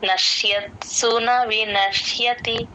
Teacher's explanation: నశ్యత్ ఆ త కూడా వినిపించాలి